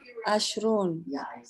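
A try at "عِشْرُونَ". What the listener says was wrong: Aisruna ya. Aisruna 20 Bu ya. Ais pakai ain ya. Ai pakai kasrah. Aisruna.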